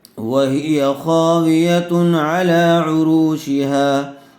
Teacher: تنوین کے بعد حروف حلقی میں سے عین آیا ہوا ہے اس لیے بغیر گننے کے جلد اظہار کر کے پڑھیں گے